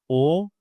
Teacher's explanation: It's a back vowel. When I say o, I'm using the back part of my mouth.